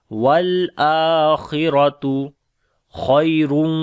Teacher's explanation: لام کے اوپر توسط کریں گے، حمزہ کو لمبا کریں گے، کھڑی زبر ہے، خا اور را کو موٹا پڑھیں گے